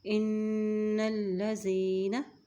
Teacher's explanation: इन्नल्लज़ीना, अब इन यहाँ पे गुना करेंगे क्योंकि नून के ऊपर शद है और वो लाम से मिल रही है